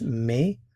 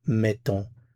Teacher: When you pronounce this mais here, your tongue is a little bit higher. So mais and then mettons, you lower your tongue a little bit.